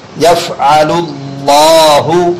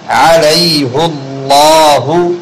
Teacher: لفظ اللہ کے لام کے پر ہونے کا قاعدہ، اس لیے کہ لفظ اللہ کے لام سے پہلے پیش والا حرف آیا ہوا ہے